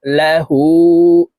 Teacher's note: হার উপরে উল্টা পেশ আছে ঠোঁট গোল করে এক আলিফ টানে পড়বো